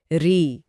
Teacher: संस्कृत के दौर में इसका उच्चारण एक शुद्ध स्वर की तरह होता था। लेकिन आज जब हम इसे बोलते हैं तो यह व्यंजन र और स्वर ई के मिलाप जैसा सुनाई देता है। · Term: ऋ की ध्वनि, री की ध्वनि